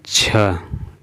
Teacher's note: तालव्य महाप्राण और घोष वर्ण का उदाहरण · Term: तालव्य महाप्राण घोष वर्ण